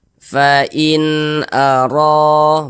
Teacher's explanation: maka huruf ro dibaca tebal, dibaca tafkhim. Sehingganya pangkal lisan kita itu naik terangkat ke atas ketika kita mengucapkannya. Huruf ro-nya tuh kita tebalkan.